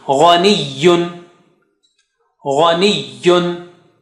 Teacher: Ghaniyun, gha is high sounding.